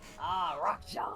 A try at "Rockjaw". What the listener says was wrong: No, rock, you're not rolling the R.